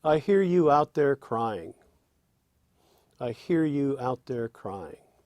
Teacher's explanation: it's a three stress line with a feminine ending with an unstressed syllable ending the line · a feminine ending which really feels kind of like it's cut off short it implies that fourth strong stress but that Four Strong stress · That has essentially three strong stresses and a feminine ending. Ba-da, ba-da, ba-da-da.